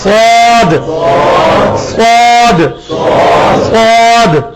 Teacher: اس کے بعد سواد ویسے ہی نکالنا ہے جیسے سین نکالتے ہیں, صرف جس طرح تا کو موٹا کیا تھا پا بنا تھا, سین کو موٹا کریں گے سواد بنے گا, مخرج وہی ہوگا